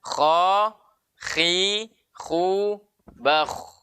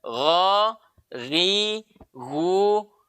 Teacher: Kalau kha agak depan sedikit, kalau ghain agak ke dalam sedikit.